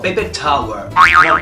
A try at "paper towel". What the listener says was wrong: Not tower, but towel.